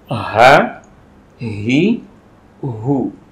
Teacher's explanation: terasa keluarnya dari pangkal tenggorokan